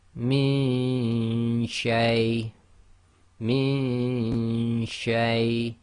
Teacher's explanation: you don't get a clear Noon sound because your tongue is not going to the articulation point